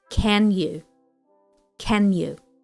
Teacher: note that the stress falls on can so we have a broad a sound